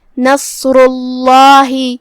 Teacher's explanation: لفظ الجلالہ کا حکم ہے تفخیم، تو ہم اسے بھاری آواز میں ادا کریں گے